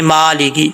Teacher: اب اس کو مالکی نہیں پڑھنا، میم کے اوپر کھڑا زبر ہے، ٹھیک ہے، میم کو لانگ کریں گے، ایک الف کی مقدار